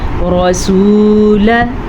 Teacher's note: سین پیش واو، سو کھینچ کے پڑھیں، رسولہ، لام زبر لا، اس کو لمبا نہیں کرنا.